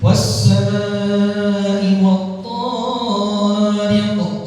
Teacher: kalimat thariq ini huruf tha-nya kelebihan dari 2 harokat